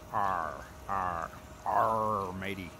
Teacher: when we say R, the tongue is down and back. Down, back.